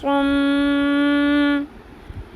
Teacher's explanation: میم کے اوپر تشدید ہے، میم کی آواز کو لمبا کرنا ہے، اس کو غنہ کرنا کہتے ہیں۔ جس میم اور نون کے اوپر تشدید آ جائے تو میم اور نون کی آواز کو لمبا کرتے ہیں، ناک کی ہڈی میں ٹھہراتے ہیں، اس عمل کو غنہ کرنا کہتے ہیں، اس رول کو غنہ کہتے ہیں، ٹھیک ہے۔